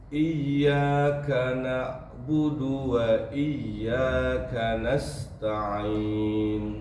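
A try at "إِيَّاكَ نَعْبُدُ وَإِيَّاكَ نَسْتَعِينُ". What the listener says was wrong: K-nya diminimkan desisnya. Iyyaka biasa aja.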